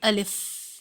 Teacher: الف کے اندر الف اور لام فا ہے، الف کو کبھی کھینچ کر نہیں پڑھا جاتا۔ الف کے پڑھنے میں ایک فا کی آخری آواز کے اندر ایک ہونٹوں پر ایئر فلو یا ہوا کا زور محسوس ہونا چاہیے